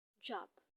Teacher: the airflow is blocked in the sound of b, job.